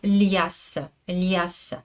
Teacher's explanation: il y en a encore de plus mouillé, plus plus palatalisé et c'est le L du mot lias.